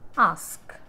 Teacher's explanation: During the articulation of the vowel a, the highest point of the tongue is at the back and it is in the fully open position. അപ്പോൾ ഈ vowel a എന്നുള്ളത് articulate ചെയ്യുമ്പോൾ tongueൻ്റെ highest position, tongue high ആയിരിക്കുന്നത് ബാക്കിലാണ്, and that's why it is a back vowel and it is in a fully open position.